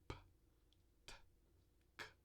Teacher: Nelas, há uma obstrução completa do fluxo de ar com uma explosão repentina ao soltar os articuladores. Tá? Então, tem fechamento completo do fluxo de ar no trato vocálico com uma abertura repentina. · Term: oclusivas surdas